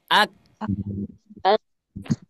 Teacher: Huruf kaf itu makhrajnya ada di pangkalisan. Pangkalisannya tempelkan dulu ke langit-langit. Ak. Ya, jadi kalau misalkan hamesnya nggak ada nih, contoh ak, suaranya seperti itu.